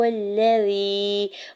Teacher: یا ساکن سے پہلے زال کے نیچے زیر ہے، یا مدہ ہو رہا ہے، دو حرکت کھینچ کے ادا کریں گے